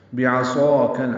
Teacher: عین وسط حلق سے ادا کریں گے، صاد پر الف مدہ ہے، 2 حرکات لمبا ہے ، کاف باریک ہے اور اس کو لام سے ملانا ہے،